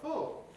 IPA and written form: fʊl (full)